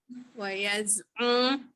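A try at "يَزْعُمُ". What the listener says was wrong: Dia ada dekat hidung tu, saya perasan juga. Dia bercampur. Makhraj betul tapi dia bercampur dengan makhraj hidung. Jadi betul lah waktu bertalaki tu kan nak kena sebut pastikan dia tidak bercampur. Dia jangan katalah ain pada depan kan. Jangan moncong dulu. Dia tekan dulu ke bawah.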